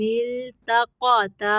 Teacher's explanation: قد، دال کو قلقلہ کرنا ہے، قاف کو موٹا پڑھنا ہے، قد کان لکم، میم کو ظاہر کرنا ہے، آیۃ فی فئتین التقطا، تا باریک ہوں گے اور قاف موٹا